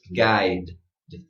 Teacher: All you want is a little d. Not a duh, okay?